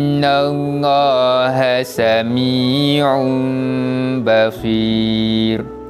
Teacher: kita nak gantikan bunyi bacaan tanwin itu pada huruf mim dan dibaca dengan bacaan dengung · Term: bacaan iqlab